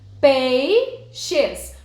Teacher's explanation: Qual seria a sílaba tônica? Pei. Portanto, a penúltima sílaba.